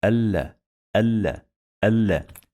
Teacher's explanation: We're gonna pronounce lam 2 times because we have shadda here.